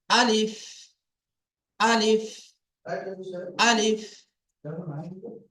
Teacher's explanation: আলিফ উচ্চারিত হয় মুখের খালি অংশ হইতে